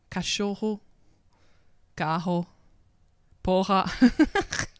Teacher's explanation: how they say R's like H's a lot of the time